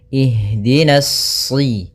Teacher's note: Maka kita baca di sini bukan uhdina tapi ihdina. Kemudian pada lafal ha, usahakan di sini mengalir nafasnya dan lembut. Ada namanya jaroyanu an-nafas.